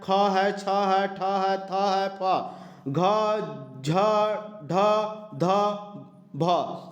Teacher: ठीक है, इसी तरह से घ, झ, तो ये सब में हवा आपको निकलेगा मुंह से, और जिसमें से मुंह में से ज़्यादा हवा निकलेगा वह मेरा महाप्राण के अंतर्गत आएगा